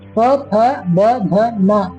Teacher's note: ಉಚ್ಚಾರ ಮಾಡ್ಬೇಕಾದ್ರೂ ಕೂಡ ನಿಮ್ಮ 2 ತುಟಿಗಳು ಸ್ಪರ್ಶ ಮಾಡ್ತವೆ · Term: ಓಷ್ಟ್ಯ ಅಕ್ಷರಗಳು